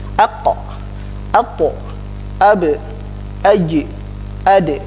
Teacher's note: Ini huruf 5 harus mantul, ya. Aqo tidak boleh ditahan, aq tidak boleh. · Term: qalqalah